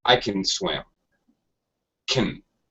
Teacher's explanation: Can, the modal verb, is generally greatly reduced in pronunciation in spoken English. The A sound actually becomes like a schwa sound, that is, That's called the schwa sound, very basic sound.